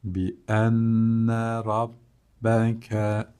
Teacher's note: şeddeli nunlarda tutuyoruz ve gunneli okuyoruz